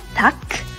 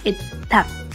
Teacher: it's really important to know that this K is pronounced only halfway